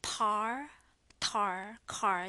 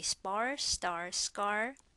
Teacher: Par, tar, car, the tissue paper should move, but when you say spar, star, scar, doesn't move.